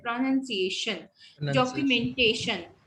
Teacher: प्रो पे जो है वो स्ट्रेस नहीं है, स पे स्ट्रेस है